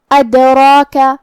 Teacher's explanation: کلمت ادراک یہاں حرف الدال ہے اور اس پہ جزم ہے، تو دال کا حکم ہے قلقلہ۔ قلقلہ کا معنی ہے حرف ساکن کو ہلانا، لہذا ہم دال کو ہلاتے ہوئے یہ کلمہ کو پڑھیں گے